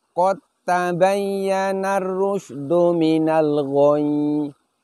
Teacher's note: Karena huruf dal sukun ini lebur atau idgham ke huruf ta, maka sifat-sifatnya dal pun menghilang. Di antara sifatnya huruf dal adalah dalam keadaan sukun dia qalqalah. Jadi bunyi pantulannya menghilang. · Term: idgham mutajanisain kubro